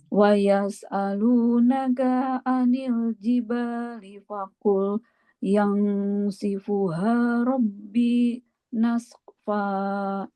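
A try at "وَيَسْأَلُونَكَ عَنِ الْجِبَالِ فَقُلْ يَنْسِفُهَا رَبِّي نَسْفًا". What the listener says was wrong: Oke, bagus.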